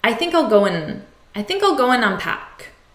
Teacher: We often reduce the word and to n, just a n sound. I think I'll go and unpack.